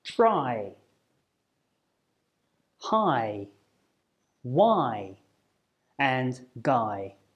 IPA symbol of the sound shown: aɪ